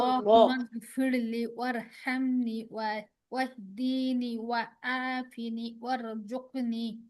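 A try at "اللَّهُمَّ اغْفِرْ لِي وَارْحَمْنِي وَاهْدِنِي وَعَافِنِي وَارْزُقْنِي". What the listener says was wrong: হ্যাঁ, শেষ সবগুলো কিন্তু টান আছে একালিফ করে। আল্লাহুম্মা গফিরলি ওয়ারহামনি ওয়াহদিনি ওয়াআফিনি ওয়ারযুকনি।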